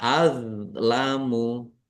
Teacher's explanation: Dok sukun bukan kolkolah, jangan dipantulkan. Ya, jangan dibaca azlamu, tapi dibaca azlamu.